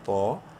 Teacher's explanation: طا کو بولڈ کرتے ہوئے ایک الف کے برابر لمبا کریں گے الف مدہ کی وجہ سے